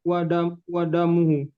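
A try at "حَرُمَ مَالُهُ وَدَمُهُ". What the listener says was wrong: Haruma maluhu wa damuhu. Dam, nggak panjang deh. Damuhu, pendek ya. Damuhu.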